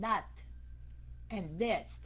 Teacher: Cái âm th đầu câu phải la lưỡi. Ok. Đọc thành chữ D á nhưng mà phải la lưỡi.